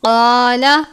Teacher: اس قاف کو موٹے والا قاف کہتے ہیں، حروف مستعلیہ میں سے ہے، ہمیشہ پر پڑھتے ہیں